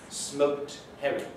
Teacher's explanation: So elision of T and D is not heard before H, for instance.